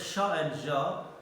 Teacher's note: So you can see here, in case of sha and ja, most part of the tongue is going against the hard palate.